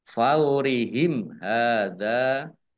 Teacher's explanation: mim sukun bertemu dengan huruf ha bacaan izhar syafawi dibaca jelas